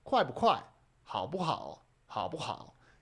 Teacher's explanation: You don't tend to really hit the fourth tone or the second tone in this case. · you'll notice here that the 不 is kind of just a fifth tone. Right? When you have it in between the two adjectives, 快 不 快?